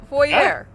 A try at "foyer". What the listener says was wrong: It's pronounced foyer. No bullshit French pronunciations.